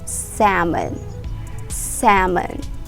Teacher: You remove the L sound.